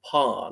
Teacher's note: it's non rotic for instance don't pronounce the letter R unless it's word initial